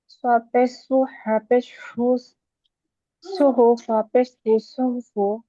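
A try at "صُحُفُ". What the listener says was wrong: আপুর হা উচ্চারণটা হচ্ছে না। সু, হা পেশ হু, সুহু।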